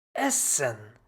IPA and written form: ˈɛsən (essen)